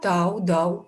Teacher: В словах тау, дау звук у является сонорным согласным